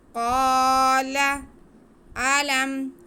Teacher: الف سے پہلے زبر ہے تو الف مدہ، کاف کو کھینچیں گے، آگے لام پہ زبر ہے، اسے بالکل نہیں کھینچنا